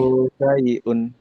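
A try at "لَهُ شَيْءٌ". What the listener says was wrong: Shinnya gede. Shinnya gede. Lahu syai'un. Lahu syai'un.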